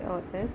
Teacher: ए और ए कंठ तालु से बोले जाते हैं।